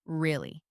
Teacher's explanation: If I say it flatly, really, it just means yes or I understand. But if I say it with a rise in intonation, really, it expresses genuine surprise